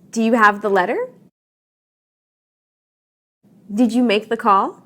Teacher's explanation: rising intonation tells your listener you are asking a question and want yes or no for an answer